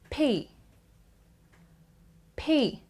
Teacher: when you say p there is so much gush of air from your mouth you actually build up air in your mouth when you close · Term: unvoiced consonant